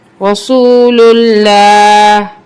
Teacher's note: وقف کی صورت میں زیر omit ہو جائے گی لیکن ہا کی آواز آئے گی.